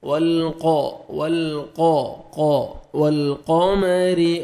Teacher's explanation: لام کو اپنے ہلانا نہیں ہے، وال ایسے نہیں پڑھنا، والقمر، قاف کو موٹا کر کے پڑھیں گے